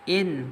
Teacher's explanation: gunah musyaddah dengan tahan 2 harakat